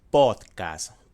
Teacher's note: Para pod en la D tienes que poner la lengua entre los dientes porque la articulación es sonora oclusiva dental, y para cast tienes primero que hacer notar la S y luego la T. La S es pronunciación fricativa alveolar sorda y la T es oclusiva dental sorda.